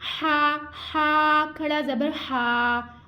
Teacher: ہا ٹھنڈی سانس کے ساتھ ہم نے ہا کو ادا کرنا ہے اور ہا کو باریک ادا کرنا ہے. اس کے ساتھ ساتھ ہم نے ہا کو 1 الف 2 حرکات کے مقدار کے برابر کھینچ کے بھی ادا کرنا ہے.